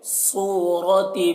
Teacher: صاد کو پر پڑھنا ہے اور را کو بھی پر پڑھیں گے